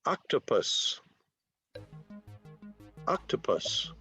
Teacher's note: 3 syllables. Stress on the first one.